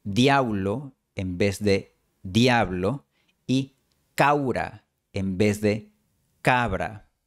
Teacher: este reemplazo de b por w también suele ocurrir cuando el fonema b está antes de las consonantes líquidas l y r. Por ejemplo, algunos chilenos pronuncian diablo en vez de diablo y caura en vez de cabra.